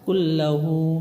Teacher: লাম র হরফ গুন্না ছাড়া পড়তে হয়